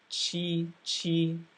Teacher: the cue sounded like TCH because your tongue was forward